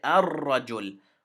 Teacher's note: We combine the hamza with the ra, and we skip the lam. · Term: sun letter